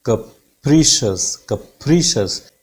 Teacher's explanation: पा साउंड पे बिल्कुल एकदम हाइट पे चली जाती है साउंड, पा साउंड पे, फिर वहां से एकदम फॉल डाउन करेगी, नीचे की तरफ आएगी